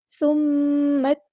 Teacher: پھر میم کو ہم نے تا کے ساتھ ملا دینا ہے